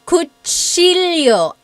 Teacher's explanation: that CH sound in Tagalog is actually a TS combination.